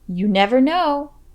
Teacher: emphasize the beginning of the word never never and the word no